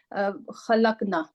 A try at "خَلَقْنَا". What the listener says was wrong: یہ نا کو تھوڑا سا لمبا کیجیے.